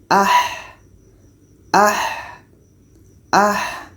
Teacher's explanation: Ha ini letaknya di tengah-tengah tenggorokan jadi kita baca ah ah ah ada suara yang kita alirkan